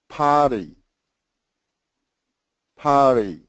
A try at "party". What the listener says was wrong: It's got to be faster. Potty. That's the speed. And it's got to be a little faster at the end. Party. Party. Faster. Party. The same party and party. The d, that's a flap T.